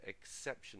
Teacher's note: it's an exception, okay, and so the stress there, exception, is on the second syllable.